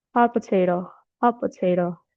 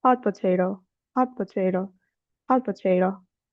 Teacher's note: The T in hot is often dropped. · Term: consonant assimilation